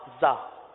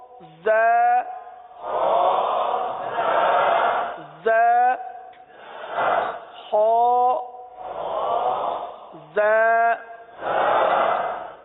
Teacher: زال تو زبان کا سرا اوپر کے دانتوں کے اندرونی کنارے سے ادا ہوتا ہے, اور یہ زا دونوں دانتوں کو بند کر کے زبان کو نیچے لگاتے ہیں. زا, اس میں سیٹی کی آواز